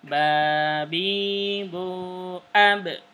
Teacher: Ingat ya, pelan-pelan nadanya harus sama, mad tabi'inya harus sama. Dan huruf ba termasuk huruf iqlab, ya, huruf iqlab dan qalqalah. Jadi babi bu ab, pantulkan karena dia qalqalah